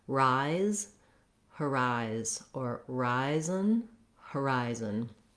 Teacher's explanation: Another way to get those syllables correct is to just start on the stressed syllable rise. This is just the same as the word rise, as in rise and shine.